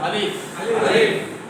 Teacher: মুখের খালি জায়গা হইতে আলিফটা উচ্চারিত হয়।